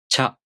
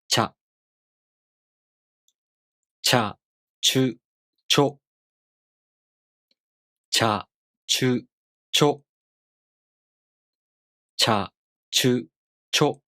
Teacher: try to add the [j] sound, a very short one, between the [tɕ] sound and a vowel